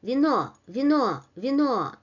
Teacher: The pronunciation is the same as in alphabet, while in the first syllable, v, the unstressed vowel loses its quality, and it is pronounced in a very quick manner, and it is close to a short variation of e